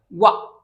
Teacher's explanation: व के उच्चारण में दांत और ओठ का योगदान होता है।